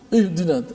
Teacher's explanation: Contoh kita baca ihdinas siratal mustaqim kan, baca dalam surah Al-Fatihah setiap hari kita baca 17 kali sekurang-kurangnya. Pada ayat ihdina, huruf ha mati kan, mesti suara ha itu dilepaskan daripada makhraj. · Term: sifat rakhawah